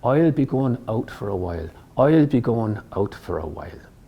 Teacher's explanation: Another key sound for this dialect is the diphthong I sound, as in the word while. Now, you can actually start to think that it becomes a little more like the sound in boy, oil.